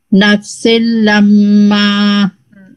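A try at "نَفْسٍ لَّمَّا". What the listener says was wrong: अभी भी मीम पे थोड़ा और टाइम। लम्मा लम्मा इसको और ब्रेक कर लें। लम्मा फिर उसको कनेक्ट कर लें। नफसिल लम्मा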